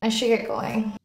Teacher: I and going I should get going the words are slightly stretched out longer and used with emphasis with the pitch the other words should and get are rushed through